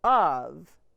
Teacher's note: the o makes the schwa sound uh and the f makes the sound for of the box was